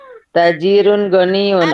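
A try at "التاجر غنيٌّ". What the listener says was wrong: Alif lamnya dibaca Bun. At-tajiru ghaniyun.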